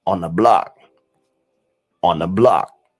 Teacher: So the th becomes n. It creates the n sound. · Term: na sound